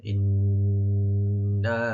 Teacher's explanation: নুন মুসাদ্দাদ এখানে গুণা করবেন এবং ৩ আলিফ টানবেন